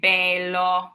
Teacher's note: Now, if you go in the south of Italy, you might hear them say bello. You might hear that AY in the word. And the difference in pronouncing those E's really has to do with where you are in Italy, what region you're in.